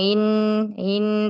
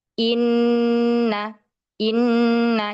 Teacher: Nah, di sini ada hamzah ya. Tekan atau tahkikan hamzahnya tidak dibaca ngambang in in tapi inna inna.